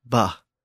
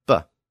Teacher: the aspirated B sound, bah, became a regular B sound, bah